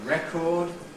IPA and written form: ˈrekɔːd (record)